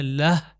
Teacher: لہ کی آواز ہے اگر کنٹینیو کروں تو ہو جائے گا لہو مگر یہاں پر کنٹینیو نہیں کریں گے اگر رکیں گے تو ہو جائے گا لہ یعنی آواز آئے گی ہے کی